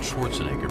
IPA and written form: ˈʃvɑːrtsnɛɡər (Schwarzenegger)